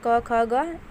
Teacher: जो क वर्ग है तो क ख ग ये कहाँ से बोले जाते हैं, हमारे कंठ से बोले जाते हैं